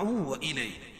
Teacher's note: تنوین کے بعد ادغام مع الغنہ کے 4 حرفوں میں سے واو ہے تو یہاں غنہ کر کے پڑھیں گے